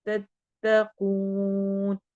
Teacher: कू कौफ मोटा है और वाव पे हम वाव मद्दा करेंगे।